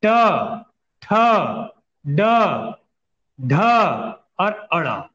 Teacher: मूर्धा, मूर्धा कहां पर बोलते हैं, दांत जो अगला वाला दांत शुरू होता है और तालु के बीच में, तालु खत्म दांत शुरू, नीचे नहीं ऊपर, इसे मूर्धा कहा जाता है। इसमें आता है एक तो ट वर्ग सभी आएगा।